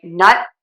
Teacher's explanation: What I do is I say nut. I don't release the air for that t. I don't say nut. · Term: unreleased t